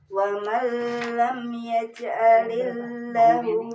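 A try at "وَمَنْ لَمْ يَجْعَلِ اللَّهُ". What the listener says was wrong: Lanya panjang. Yaj'alillahu.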